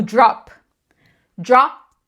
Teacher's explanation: Se você colocar a mão na sua garganta, você vai ver que eh não vibra na hora de pronunciar só o P. Se vibrou, tá errado. · o P ele é não vozeado, ou seja, na hora de pronunciar o P sozinho não sai voz, só sai arzinho. Isso é é não ser vozeado, entendeu?